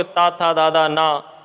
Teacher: जब हम उच्चारण करते हैं तो हमारी जिह्वा दांतों को स्पर्श करती है